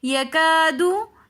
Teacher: یکادو میں کاف کے ساتھ الف مدہ آ رہا ہے، کیونکہ الف ساکن اس سے پہلے زبر ہے تو ایسا الف مدہ کہلایا جاتا ہے۔ الف مدہ کو ایک الف کی مقدار کھینچ کر پڑھتے ہیں۔ الف مدہ کی وجہ سے ہم یکادو تھوڑا سا کھینچ کر پڑھ رہے ہیں۔